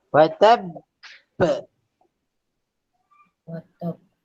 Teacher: Dia ada syaddah ke huruf qalqalah. Jadi qalqalah akbar.